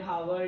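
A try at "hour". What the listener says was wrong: या तो आवर, आवर बोलते हैं, हावर नहीं बोलते, ठीक है। आर, आवर, आवर, ठीक है ना, आवर भी नहीं बोलते बल्कि टू आर ही बोलते हैं बस, ठीक है।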